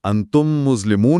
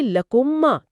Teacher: आप मीम की आवाज पर जोर देकर उसे लंबा कर रहे हैं।